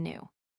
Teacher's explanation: The American in general is much less careful than the Englishman to preserve the shadowy Y sound before U in words of the Duke class.